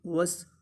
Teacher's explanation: واو سین کے ساتھ ملائیں گے، وس کیونکہ سین ساکن ہے